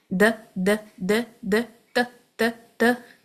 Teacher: त दाल और ता का सेम ही मखरज है। एक ही जगह जुबान लग रही है। त सिर्फ हैवी है। · تو دال اور تا کا سیم ہی مخرج ہے، ایک ہی جگہ زبان لگ رہی ہے. تو صرف ہیوی ہے، یہ دونوں لائٹ ہیں.